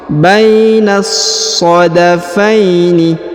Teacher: Bainas sadafaini, perhatikan huruf ba diayun sekali karena di depannya terdapat ya sukun atau ya mati. Bainas, huruf na langsung masuk dan dileburkan ke huruf so, ya, disambung ke huruf so. Bainas sadafaini, bainas, ditekan, ya, huruf so.